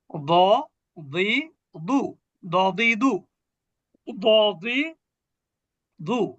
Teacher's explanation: যাব জিহ্বার কিনারা এই ক্ষেত্রে জিহ্বার বাম কিনারা ঠিক তার উপরে বাম কিনারা উপরের মাড়ির দাঁতের গোড়ার সাথে লাগবে